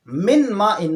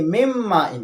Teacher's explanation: مم مائن، نون ساکن کے بعد حروف یرملون میں سے میم آیا ہے، لہٰذا ہم اس نون کو میم کے ساتھ ملائیں گے، من مائن نہیں پڑھیں گے بلکہ مم مائن پڑھیں گے۔ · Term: ادغام